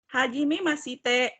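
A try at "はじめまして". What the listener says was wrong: I-nya nggak usah dibaca. Haji Memaste. Haji Memaste.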